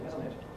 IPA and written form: ˈɪzn̩ ɪt (isn't it)